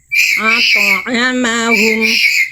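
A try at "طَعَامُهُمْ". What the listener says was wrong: Jangan sengau semua bunda, yang sengau nggak ada, yang sengau cuman mim dan mim aja. Itu pun ketika melafalkan dalam keadaan makhraj aktif. Sisanya ketika bunyi a i u tidak ada yang sengau. Ya, al-ta'amahum, to sukunya sudah tebal, tapi sengaunya belum, masih ada semuanya.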